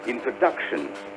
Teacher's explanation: The stress is on the 3rd syllable.